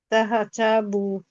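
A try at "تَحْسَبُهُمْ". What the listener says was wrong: তাহসাবু। তাহা না কিন্তু, তাহ, তাহা জবর তাহ, মানে তাকে হাকে ধরবে, একটা ধাক্কা খাবে। তাহসাবুহুম, তাহসাবুহুম। হ্যাঁ, তাহসাবুহুম, তাহসাবুহুম।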